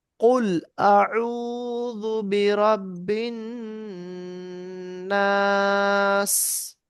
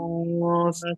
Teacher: নুনের উপরে তাসদিদ থাকার কারণে এক আলিফ গুণনা হচ্ছে